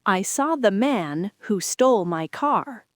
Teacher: The pause comes right before the who.